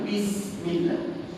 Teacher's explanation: Kerana sin dekat situ sofir, sifat huruf dia sofir, bunyi yang seakan-akan bunyi binatang, dan juga ada hamas angin.